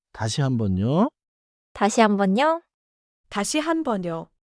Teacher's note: not a dramatic question, just a polite lift at the end